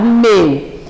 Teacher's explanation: Meu é monossílabo, mas nesse caso o ditongo eu é fechado.